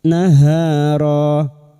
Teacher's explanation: Fathah tanwin harakat dibaca dengan wakaf selain ta marbuta. Dua harakat kita panjangkan, mad iwadh, naharo. Kemudian ulangi atau ibtida pada kalimat au naharo.